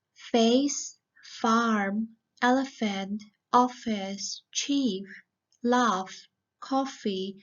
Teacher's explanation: you have to bite your lower lip but it's unvoiced so we do not need to use our vocal chords · right starting with the first sound which is a voiceless sound it's created with the friction between the bottom lip and the top teeth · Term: fur sound